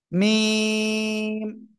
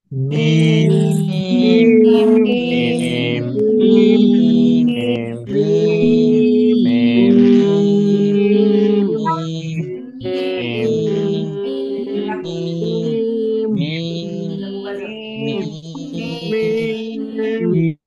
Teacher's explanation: দুই ঠোঁটের শুকনো জায়গা থেকে উচ্চারিত হবে।